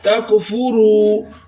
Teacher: واو ساکن ہے اس سے پہلے پیش تو یہاں واو مدہ بھی ہو رہا ہے، اس کو ایک الف کی مقدار کھینچ کر پڑھنا ہے